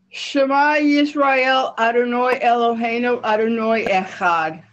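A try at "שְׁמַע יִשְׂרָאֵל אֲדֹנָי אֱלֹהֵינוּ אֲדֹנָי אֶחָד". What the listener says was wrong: The only thing I would say, and you don't see the vowels, so it's not really that important, but if you would see them, the way we pronounce it, if we're doing Sephardic Hebrew, is Adonai, not Adonoi. Adonoi is when we do that O sound, that like Baruch instead of Baruch. So it's Adonai. You can read Adonoi, but just so you know why the sound is a little different.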